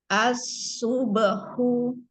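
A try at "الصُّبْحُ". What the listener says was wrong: Monyong lagi dong mah. As-subahu. Nih, subahu. Hu-nya monyong. Subahu.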